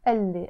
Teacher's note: I wrote it قال لي, but I pronounced it قال لي as if it's one word. You always pronounce this قال لي as one word.